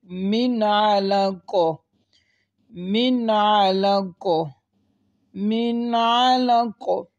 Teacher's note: اگر آپ غور کریں نون ساکن کے بعد آئین آ رہا ہے، یعنی غنہ نہیں کریں گے۔ ہمارا قاعدہ یہ تھا نون ساکن اور تنوین کے بعد حرف ہلکی میں سے کوئی حرف آ جائے وہاں پر اظہار ہوگا، یعنی غنہ نہیں کریں گے۔